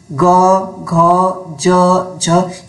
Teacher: वह व्यंजन होते हैं जिनका उच्चारण करते समय स्वर तंत्रिकाएं झंकृत होती हैं। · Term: घोष